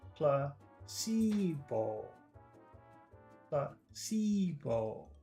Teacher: Three vowel sounds in there. Placebo. Placebo. That's short, long, long.